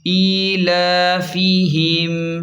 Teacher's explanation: حمزہ کھڑی زیر ای، لام کھڑا زبر لا، فا زیر فی، حامیم زیر ہم، ایلافیہم، میم ساکن پر غنہ نہیں ہوگا، اسے صاف پڑھیں اور یا کے نیچے کھڑی زیر ہے، اسے تھوڑا سا کھینچ کر پڑھیں، اور لام پر بھی کھڑا زبر ہے، اسے بھی تھوڑا کھینچ کر پڑھیں، یعنی دونوں کو ایک ایک الف کے برابر کھینچ کر پڑھیں۔